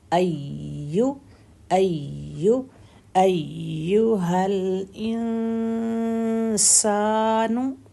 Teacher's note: پہلی یا کو 4 حرکت کا ٹائم دے کے دوسری یا زبان کے بالکل سینٹر سے ادا ہوتی ہے اور زبان کے سینٹر میں تھوڑا سا پریشر دیں گے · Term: تشدید